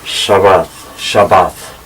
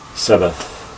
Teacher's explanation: they don't have the sh sound, so it became s, and so then we borrowed it with just an s.